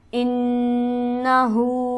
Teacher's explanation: انہ میں نون مشدد ہے جو کہ غنہ سے پڑھا جائے گا، اور ہاں پر ہمارے پاس الٹی حرکت یعنی کھڑی حرکت موجود ہے، الٹا پیش ہے، جسے ہم ایک الف کے برابر کھینچ کر پڑھتے ہیں.